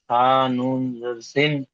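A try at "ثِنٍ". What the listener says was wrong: নুনটা টান টান হচ্ছে না, নুনটা তিন আলিফ পরিমাণ টান দিতে হবে।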